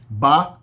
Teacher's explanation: Ba é a oclusiva bilabial sonora. · tem as oclusivas sonoras, que tem vibração na corda vocal